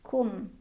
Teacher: ada idhar syafawi karena ada mim sukun bertemu dengan huruf ta, dibaca mim sukunnya jelas